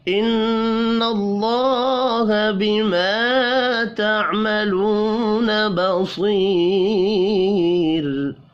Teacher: نون مشدد پر غنہ کریں گے، اللہ کا نام زبر کی وجہ سے پر پڑھا جائے گا۔